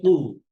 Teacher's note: জিহ্বার গোড়া উপরের নরম অংশ ওখান থেকে কু